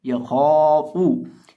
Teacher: खौ को लंबा तो करना ही है, अलिफ को लंबा तो करना ही है, लेकिन हम अलिफ को मोटा भी करेंगे, क्योंकि अलिफ मोटे हरफ के बाद है।